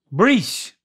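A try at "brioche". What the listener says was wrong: Breach. There's an O in there. The O is silent.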